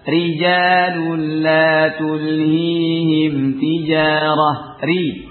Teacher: Dan tarqikanlah ra, yakni bacalah tipis pada ra ketika di kasrah.